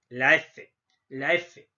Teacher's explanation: Labio dental quiere decir que voy a hacer uso de mis labios y también de los dientes